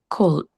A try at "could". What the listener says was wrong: Ini bacanya could gitu ya. Could, jadi kayak KUD. Could gitu. L-nya nggak dibaca. Could evolve.